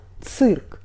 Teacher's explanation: We write цирк — И after Ц. Vowel И shows that consonant before must be soft but Ц is always hard, so we pronunciate this word [цырк]. Not [цирк] but [цырк]. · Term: Hard Ц